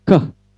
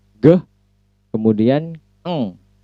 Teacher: Ke voiceless ya, unvoiced consonant, dan ge voice and eng voice.